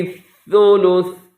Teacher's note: یہاں پہ رموز اوقاف میں سے جیم ہے، تو جب وقف کریں گے تو سا کو ساکن کر دیں گے